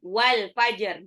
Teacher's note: jimnya itu qalqalah. Jadi dipantulkan.